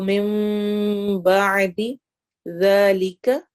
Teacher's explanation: من بعد میں نون ساکن کے بعد با آ رہا ہے. اقلاب کو ادا کرتے ہوئے ہمارے پورے ہونٹ بند نہیں ہوتے ہیں. اچھی طرح سے جس طرح غنہ کے لیے ہم ثم یا انا میں کرتے ہیں ویسے نہیں ہوتا.